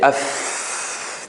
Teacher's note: if you say f there is a flow still flow of air is still coming out